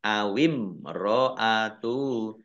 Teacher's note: Mim sukun bertemu dengan ro, bacaan idhar safawi dibaca jelas